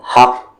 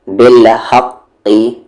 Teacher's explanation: زبر زیر پیش ہٹ جائے گا لیکن قلقلہ رہے گا، اور کیسا قلقلہ رہے گا؟ زور سے، حق، جیسے بالحقی، قلقلہ نہیں ہوا، اور اگر رکیں گے تو بالحق قلقلہ ہوگا اور اسٹرانگسٹ۔